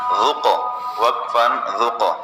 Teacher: قاف حروف قلقلہ میں سے ہے، پہلے سے ساکن ہے، اس پر قلقلہ کیا